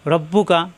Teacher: রব্বুকা কোনো টান নেই। রব্বুকা, রাব্বুকা হবে না কিন্তু।